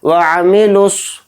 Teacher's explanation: स्वाद को यहाँ पर मोटा पढ़ेंगे, स्वाद के ऊपर खड़ा ज़बर होने की वजह से स्वाद को थोड़ा खींचेंगे एक अलिफ की मकदार।